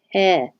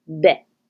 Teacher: So the P will have a burst of air, and you'll be able to see that on a spectrogram before the vowel begins. So there's a delay between releasing P, the air, and your vowel beginning.